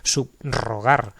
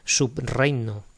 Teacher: Sigue sonando como una R fuerte, marcada